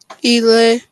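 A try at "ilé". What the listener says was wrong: We need to emphasize that they need to also be able to pronounce it the correct way. Ile Ile, they are different. So that intonation is important.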